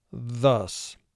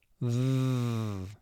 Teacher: Here TH represents the second sound th. And if you put your hand over your vocal cords, you'll feel the vibration when you make that sound.